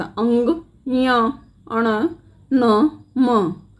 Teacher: आप इनका उच्चारण करोगे तब नाक में एक झंझनाहट सा महसूस होगा। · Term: नासिकीय ध्वनियाँ